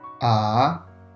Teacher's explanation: The second tone starts a little bit lower than the first tone, and then you raise your voice up.